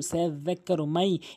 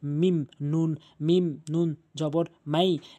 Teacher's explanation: এই যে মাই, এখানে ঈদগামে বাগুনার নিয়মটি প্রয়োগ হয়েছে। নুন সাকিনের পর ইয়া আসছে, 4টির মধ্যে এখানে ইয়া রয়েছে, তাহলে এই নুন সাকিনকে আপনারা গুণনা করবেন।